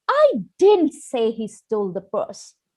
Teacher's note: I'm going to change my intonation on the second word, didn't.